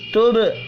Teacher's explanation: با ساکن پر قلقلہ بھی کرنا ہے